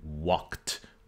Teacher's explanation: the k is voiceless and it triggers a devoicing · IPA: /k/